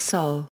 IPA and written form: sɔw (sol)